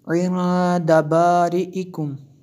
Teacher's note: یہاں پہ نون ساکن کے بعد دال ہے تو یہاں پہ اخفا ہوگا، اس لیے ہم نے غنہ کیا۔